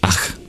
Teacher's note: English did have a version of the Visarga in Sanskrit, an expulsion of breath. Similar to the German CH at the end of words, ach, and English being a Germanic language too.